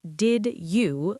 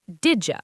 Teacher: In English, native speakers don't say did you like two separate words. They say didja. They connect the sounds. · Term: linking